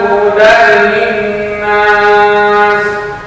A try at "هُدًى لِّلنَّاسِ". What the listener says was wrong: Oke, gunanya perlu ditambah dikit. Linnas, ditahan dikit.